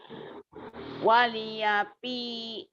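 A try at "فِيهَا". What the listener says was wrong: Bukan pi a, fiha. Fiha bukan pi a. Ha.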